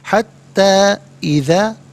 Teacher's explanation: یہاں پر مد منفصل ہے، مد جائز بھی کہتے ہیں، منیمم اس کو 3 سے 4 حرکات کی مقدار کھینچ کر پڑھنا چاہیے، میکسیمم اس کو 5 سے 6 حرکات کی مقدار کھینچ کر پڑھ سکتے ہیں۔